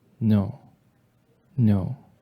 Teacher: Just a tiny little Y sound coming off the end of that N before the O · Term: light consonant